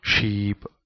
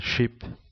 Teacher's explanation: Spanish learners may fail to catch the difference in length because their own language uses length in different ways, as in sheep and ship. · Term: vowel length